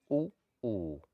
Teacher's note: इनके प्रयोग में केवल होठों का ही प्रयोग होता है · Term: ओष्ठ्य